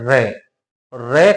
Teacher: है र र करते कहते हैं या उच्चारित करते हैं तो हमारी जो जीवा है उस जीवा में दो से तीन बार कंपन होता है इस आधार पर कुछ विद्वान इसको क्या मानते हैं प्र कंपित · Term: लुंठित व्यंजन